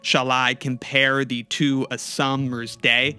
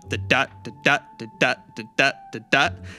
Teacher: It's got this unstressed and then stressed syllable rhythm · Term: iambic pentameter